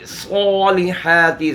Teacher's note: स्वाद मोटा खड़ा ज़बर है, एक अलिफ के बराबर भी खींचेंगे और सिफत सफ़ीर का भी ख्याल करेंगे।